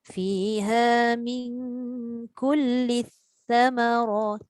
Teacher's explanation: Hujung lidah keluarkan untuk sa